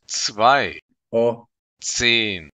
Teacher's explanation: the letter Z is pronounced like ts